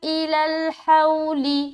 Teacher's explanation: یہاں پر واو ساکن سے پہلے کیا ہے؟ زبر ہے, تو واو لین ہو گیا. نرمی کے ساتھ جلد ادا کریں گے.